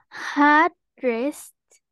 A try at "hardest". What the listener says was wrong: Not dressed. Hardest.